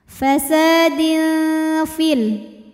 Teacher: hukum ikhfa ausat karena ada tanwin kasrah menghadapi huruf Fa maka tanwin dibaca samar-samar siap-siap menuju Fa disertai dengung